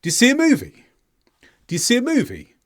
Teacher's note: notice that my voice generally went up through the statement you see a movie